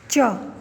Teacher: यह हिंदी की तालव्य कंठ से ऊपर का जो हिस्सा है उसमें अल्प प्राण अघोष स्पर्श संघर्षी ध्वनि है